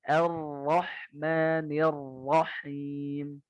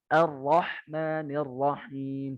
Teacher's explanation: Kalau Yaman, dia ro-nya itu seperti ada rokhwahnya, jadi lebih lama.